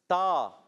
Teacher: زبان کا سرا اور اوپر کے دانتوں کی جڑوں سے ادا ہوتا ہے